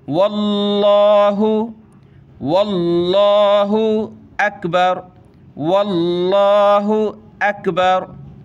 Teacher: लफ्ज़ अल्लाह बड़ी शान वाला है, इसको मोटा करके बड़ा करके पुर करके पढ़ा जाता है। इसका ये लाम लाम असली कहलाता है, यानी इसको हम मोटा करेंगे।